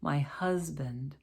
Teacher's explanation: that's the s making a z sound